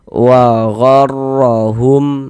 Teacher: Maka huruf ro yang memiliki harokat fathah atau huruf ro yang memiliki harokat dhammah, dia dibaca tebal, dibaca tabkhim, sehingga ketika kita mengucapkannya itu pangkal lidah kita, pangkal lisan gitu naik terangkat ke atas, ditebalkan huruf ro-nya.